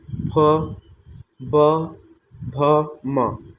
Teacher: ओष्ठ व्यंजन कहते हैं, क्योंकि यह ओठ की सहायता से बोला जाता है। प, जैसे कि फ, ब, भ, म।